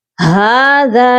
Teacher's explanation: हाज़ा सिरातुम मुस्तकीम, हाज़ा, यहाँ पर भी एक अलिफ की मिकदार जाल को खींच कर पढ़ेंगे और जाल नरम हर्फ है, इसके लिए हमारी जुबान जो है ऊपर वाले दांतों के किनारे से सॉफ्टली टच होगी।